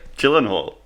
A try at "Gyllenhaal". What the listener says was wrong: Gyllenhaal. No, it's not G. It's Gyllenhaal. Gyllenhaal.